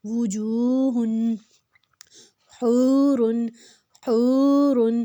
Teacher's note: اور اس کی پیش 2 حرکت لمبی ہوگی، واو مدہ۔ وجوہ، حور، حور، اب اس میں ہم نے اس کو حلق سے نکالنا ہے، ہا کو۔